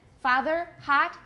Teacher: well and it's hot and British a totally different vowel but in America father hot they have the same vowel ah